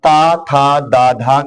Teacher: त, थ, द, ध का उच्चारण स्थान दंत है